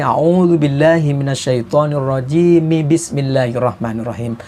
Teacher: mim di akhir a'udzubillah tadi harus dihidupkan